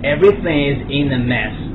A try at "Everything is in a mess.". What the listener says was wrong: ▁把 单 词 ▁mess ▁读 准 了 没 读 准 ？ 来 ▁，mess. 又 不 对 了 ， 原 来 是 ▁a， ▁嘴 巴 要 小 一 点 。a ▁mess ▁mess.